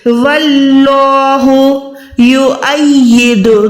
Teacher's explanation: اللہ کے نام سے پہلے واو پہ زبر ہے تو اس اللہ کے نام کو موٹا ادا کریں گے